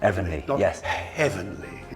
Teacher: You dropped the H on heavenly.